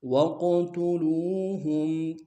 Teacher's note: قاف میں قلقلہ کریں گے، موٹا ادا کریں گے، لو میں واو مدہ ایک انداز میں کھینچیں گے.